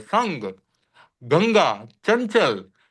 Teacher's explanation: जो बोलचाल की भाषा में उच्चारण होता है वो नाक से ही निकलता है।